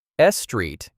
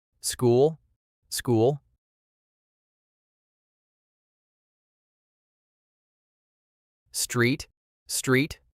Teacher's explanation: when Spanish speakers say English words that start with s plus consonant, their brain adds an e at the beginning.